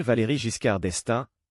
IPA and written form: valeʁi ʒiskaʁ dɛstɛ̃ (Valéry Giscard d'Estaing)